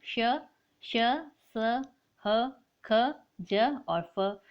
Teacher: जब हम इनका उच्चारण करते हैं तो जो दो उच्चारण अवयव है इतनी निकटता पर आ जाते हैं कि इनके बीच का जो मार्ग है वो छोटा हो जाता है और जो वायु है वो कंपन करती हुई मुख से बाहर निकलती है। ऐसे व्यंजनों को हम कहते हैं संघर्षी व्यंजन।